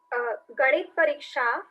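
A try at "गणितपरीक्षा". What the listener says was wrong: Ganita Pariksha, not Ganit Pariksha. In Hindi it is Ganit, but in Sanskritam it is Ganita. Ganita Pariksha Kasam Katinam.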